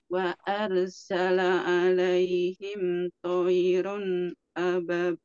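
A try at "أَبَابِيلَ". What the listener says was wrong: Nah, ini tidak ada tasydid. Jadi jangan ababil, tidak. Ababil seperti itu. Ulangi. 2 harakat. Ba. Coba aba.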